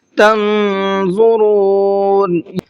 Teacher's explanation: نون ساکن کے اندر اخفا ہوگا اس لیے کہ نون ساکن کے بعد میں ضا ہے اور ضا بھی اخفا کے 15 حروف میں سے ایک حرف ہے۔